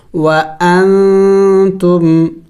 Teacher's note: یعنی ناک میں آواز لے کے ناک میں آواز چھپائیں گے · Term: اخفا